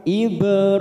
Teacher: Ibra ada huruf ba sukun qalqalah sugro karena mati di tengah kalimat, kita pantulkan Ibrahim. Ra fathah berdiri 2 harokat.